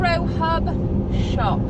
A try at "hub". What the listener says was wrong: Hub. It sounds like you're saying herb. Retro herb shop.